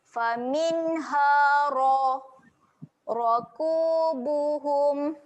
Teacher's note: Ro dekat sini ro yang tebal. Tebalkan bunyi dia, muncungkan.